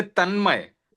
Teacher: तन्मय में न का जो है अनुनासिक नहीं बना ठीक है ना क्योंकि न के बाद म जो आया है